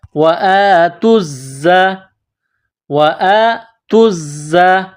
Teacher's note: زا میں سیٹی کی آواز پیدا کرنی ہے